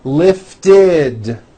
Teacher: If a word ends in a T or a D sound, we add the ending id, which is a vowel I followed by a D, which is voiced.